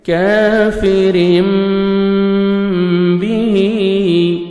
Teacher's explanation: इक़लाब तो यानी नोज़ में साउंड लेके जाएंगे, आप इख्फा करेंगे